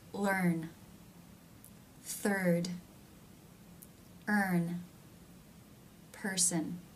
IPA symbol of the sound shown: ɝː